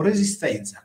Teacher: quando questa zetta consonantica e accompagnata da una consonante sorda anche il suono della Z diventa sordo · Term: z sorda, Z sorda